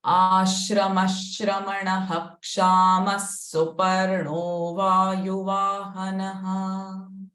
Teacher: In second line, the first visarga sound is sh, the second visarga sound is ha, the third visarga sound is sa.